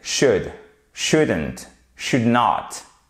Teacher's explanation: dans should, vous ne prononcez pas le L